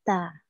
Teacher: Makhraj huruf ta itu di mana? Yaitu di ujung lidah lewat pangkal gigi yang seri atas. Ta gitu ya.